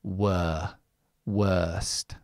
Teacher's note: when we have a w at the beginning, it changes to the long schwa. wer worst. So, just remember the the long schwa. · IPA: ɜ